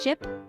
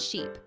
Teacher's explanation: The vowel sound in ship is short and relaxed, while the vowel sound in sheep is long and tense.